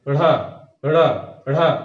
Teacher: जब इनका आप उच्चारण करेंगे तो ये जैसे बाहर की तरफ फेंके जाते हैं। ढ़ा, ढ़ा, ढ़ा, ढ़ा, जिह्वा ऊपर जाकर बाहर की तरफ तुरंत आती है तेजी से। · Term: उत्क्षिप्त व्यंजन